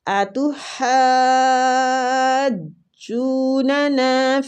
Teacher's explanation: اس کو مد لازم کلمی مستقل کہیں گے، اور اس مد کو ہم نے 6 حرکات کھینچنا ہے۔